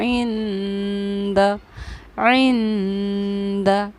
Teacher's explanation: नून साकिन के बाद हुरूफ़ इख्फ़ा में से दाल आ रहा है, इसलिए इस नून साकिन पर हमने एक ठहराव किया जिसको हम इख्फ़ा करना कहते हैं। इंद عند، इस तरह करके हमने इसको पढ़ा।